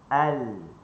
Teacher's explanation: Huruf lam kita guna hujung tepi lidah ni